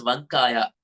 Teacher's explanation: The letter V should sound with the help of the lower lip, but not with a round mouth. If you say with a round mouth, V, uh, it sounds like W.